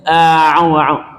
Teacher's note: Caranya itu huruf ain itu letaknya di tengah tenggorokan, makhraj, tempat keluar pabriknya itu di tengah tenggorokan. Maka ketika huruf ain itu kita ucapkan kita hanya mundurkan tengah tenggorokan, jangan mundurkan pangkal lidah.